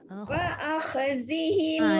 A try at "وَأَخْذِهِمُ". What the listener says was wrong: Dia jangan heret. Jangan heret suara yang banyak. Wa-akh. Mur nipis وأخذهم الربا.